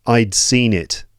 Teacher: We don't always say I'd seen it. You don't always get a gap between the d and the next word.